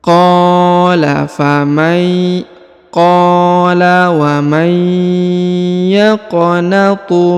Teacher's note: huruf qa dipanjangkan 2 harokat karena di depannya terdapat alif.